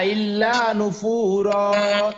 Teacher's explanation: এক জবর দিয়ে আবার এক আলিফ টেনে থামতে হয়